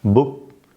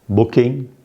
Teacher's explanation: in the word book, the k is not released, whereas in booking, the k is released.